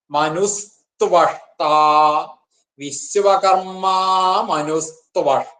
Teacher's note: വിസർഗം ഉണ്ടല്ലോ അത് സകാരമായി മാറിയിട്ട് മനുസ്ത്വവ ത്വഷ്ട എന്നാണ്